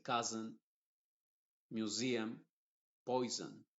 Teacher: Y en la gran mayoría de palabras que contienen vocal más una S más otra vocal, la S se pronuncia con una Z que yo le llamo la Z inglesa